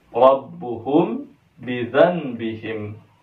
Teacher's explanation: ra-nya ini adalah ra tafkhim. Maka harus dibaca tebal. Kenapa? Karena ra-nya bersyakal fathah.